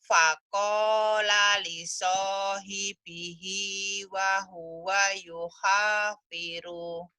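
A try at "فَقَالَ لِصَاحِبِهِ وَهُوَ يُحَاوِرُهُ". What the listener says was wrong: Bukan yuhafiru tapi yuhawiruhu. Hu-nya kan dibaca apa adanya. masih ikro 3. ikro 3, 4 dibaca apa adanya. Ikro 5, 6 baru ujungnya dihentikan. Yuhawiruhu.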